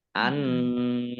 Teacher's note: Annallaha, nun tasdid dibaca gunnah atau mendengung, ditahan 2 harokat. Allahnya dibaca tebal karena harokat di depannya fathah. Lam fathah berdiri mat tobi'i, panjang 2 harokat.